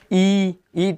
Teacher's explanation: ई तो मतलब आगे वाला जीभ का हिस्सा हमारा आवाज़ कर रहा है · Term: अग्रस्वर